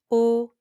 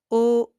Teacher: The o in French is rounded and steady. You make your lips round and you say o